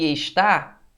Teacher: Veja que estar, você separa, né? Então a sílaba tônica é a última, né? Então aqui você tem uma palavra oxítona.